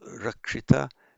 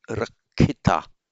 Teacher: And by regular phonetic mutation, this ksh in Sanskrit almost always turns up as a double aspirated k in Pali. So rakshita becomes rakhita.